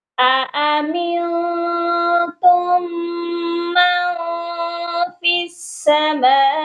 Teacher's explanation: دو حمزہ ہیں، دونوں کی آواز سیپریٹ ہونی چاہیے، الگ الگ آواز آنی چاہیے۔